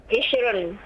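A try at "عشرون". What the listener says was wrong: Panjang. Ishrun.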